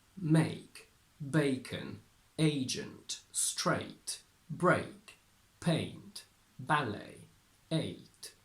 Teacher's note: So basically, we go from E, E, E to I, I, I. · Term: diphthong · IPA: /eɪ/